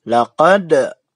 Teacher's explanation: Laqad, ya, bacanya harus memantul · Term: qalqalah kubra